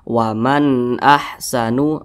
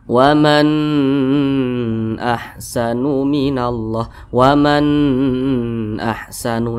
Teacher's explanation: huruf-hurufnya maka nun sukun berjumpa dengan Hamzah berarti hukumnya izhar halqi dibaca jelas tidak berdengung jadi dibaca jelas pendek saja